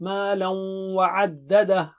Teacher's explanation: لام کو واو سے ملائیں گے غنے کے ساتھ، یعنی غنہ یعنی دو چیزیں، ناک سے آواز، ڈبل حرکت